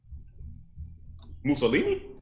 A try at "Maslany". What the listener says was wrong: It's Maslany. Maslany. Yeah, Maslany. No, it's not Mussolini. Masl. You're still putting an extra vowel